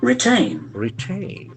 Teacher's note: So we can see that the accent falls in second syllable.